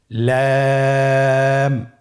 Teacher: আপনারা আমার সাথে বলুন লাম। লাম হরফটির মাখরাজ হলো জিহ্বার আগার কিনারা উপরের দাঁতের মাড়ির সঙ্গে লাগিয়ে উচ্চারিত হয়।